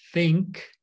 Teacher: when you see the th like in think most people pronounce this as tick